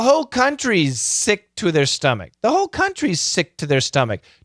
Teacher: the faster we go the smaller the Z the bigger the S